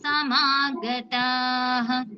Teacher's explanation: మాకి దీర్ఘము తాకి దీర్ఘంతో పాటు విసర్గ